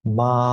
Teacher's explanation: birinchi ton bu 5-chi shkaladan to 5-chi shkalagacha biz aytishimiz kerak